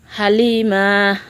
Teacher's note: লম্বা হা উচ্চারণে গলায় শোষ শব্দ হবে